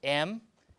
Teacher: m is bilabial voiced